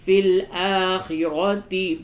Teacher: حمزہ کھڑا زبر آ کو تھوڑا سا کھینچیں گے، را کو پڑ کر کے پڑھیں گے